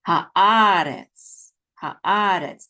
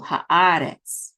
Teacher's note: So the accent is on ah. So it's haaretz, haaretz, not haaretz at the last syllable, which would be the default, but it's in the second syllable, haaretz, okay?